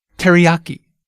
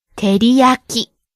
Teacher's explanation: See how we stress the ya syllable? · Each syllable gets the same amount of stress. Keep it even.